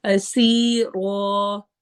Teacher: اسیرو، سی سین سٹی والی آواز ہے اور یا مدہ ہے، رو کو آخر میں موٹا بھی کرنا ہے اور لمبا بھی کرنا ہے، الف مدہ پورا پراپر کرنا ہے۔